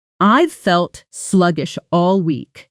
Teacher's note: Almost one continuous sound between sluggish and all.